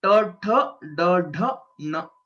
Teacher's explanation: whenever we are pronouncing these, ta, tha, da, dha, na, our tongue rolls back. Okay. These letters are called retroflex letters.